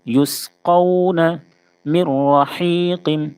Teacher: نون ساکن ہے، نون ساکن کے بعد را ہے، اس لیے ادغام تام ہوگا، یعنی نون ساکن کی جو آواز ہے وہ بالکل ختم ہو جائے گی، یعنی را سے بدل جائے گی